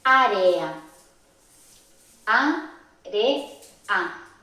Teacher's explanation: la E y la A últimas están juntas, pero lo pronunciamos separados, o sea, están en dos sílabas diferentes. Esto sería un hiato.